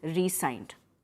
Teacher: Over here, when we are including a hyphen between re and sign, this sign is pronounced, the S is pronounced as S only, and you emphasize the first syllable.